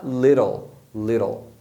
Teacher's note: Quase um E do português, bem curtinho, né? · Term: som curto do I